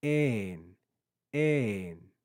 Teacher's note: you can hear my pitch rise and fall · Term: circumflex accent